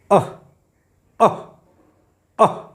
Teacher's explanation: और विसर्ग अह अह अह, मतलब कंठ से सीधे बाहर ध्वनि आ रही है